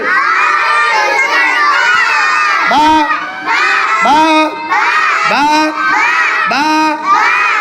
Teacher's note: মাখরাজ 15 নম্বর মাখরাজ দুই ঠোঁটের বেজা দুই ঠোঁটের বেজা জায়গা থেকে বা হরফটি উচ্চারিত হয় বা বা বা বা 15 নম্বর মাখরাজ দুই ঠোঁট গুল করে